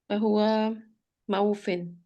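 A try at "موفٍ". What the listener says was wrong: Not Mau. Mufin.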